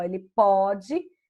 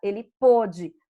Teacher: Agora, se for no pretérito perfeito do indicativo, no passado lá, o que a gente vai fazer? Ele pôde, vejam que o som mudou, ele pode, vogal aberta, ele pôde, vogal fechada